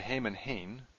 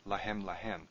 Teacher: So really all that's changed, aside from this helping vowel here, the kametz that goes all the way through, is that we've gone from a long tzere to a short segol